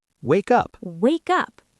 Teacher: The K jumps over to the U. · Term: consonant to vowel linking